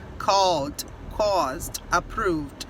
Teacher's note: Você sente ele aqui na garganta. Quando você pronuncia, você não pronuncia ed. Não existe essa pronúncia de ed no inglês. Você pronuncia ele como se fosse só o D.